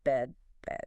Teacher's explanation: Then there's the E sound in bed, IPA symbol. For this, your mouth is slightly open, tongue sort of mid-height, fairly relaxed.